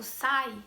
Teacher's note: Porque o sai, o que fica evidente vai ser justamente a letra a vogal A. E o I aí vai ter um som mais fraco e a gente chama ele então de semivogal.